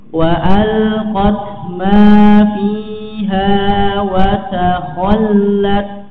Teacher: ma di sini ada mad tabi'i ya, dipanjangkan dua harokat